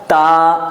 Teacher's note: یہ ہماری زبان اوپر کے دانتوں کے جھڑوں کے اندر مضبوطی کے ساتھ لگنی چاہیے اور بیچ کی زبان بیچ والے تالوں میں لگنی چاہیے، تو یہ نکلے گی تا، ہاں یہ ہے تا۔